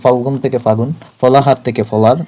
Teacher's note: ল এবং হ হারিয়ে যায় সাধারণত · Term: অন্তর্হতি